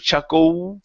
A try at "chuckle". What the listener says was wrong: Okay, now you're using your lips. You're saying chuckle using an oo. Okay, the L in English is you have to use your tongue to pronounce it.